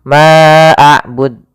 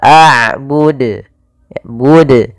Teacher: Harusnya tidak boleh ditambahkan hamzah, tetap dijelaskan qalqalahnya.